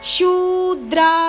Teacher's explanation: ಶೂ ದೀರ್ಘ ಇದೆ ಶುದ್ರ ಅಲ್ಲ